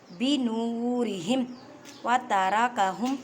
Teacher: را کو موٹا پڑھیں کیونکہ را کے اوپر زبر ہے